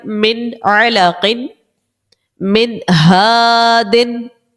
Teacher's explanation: اظہار کے اندر ہم نے غنہ نہیں کرنا، یعنی ناک میں آواز نہیں لے کے جانی. سمپل سا اس کو پڑھنا ہے.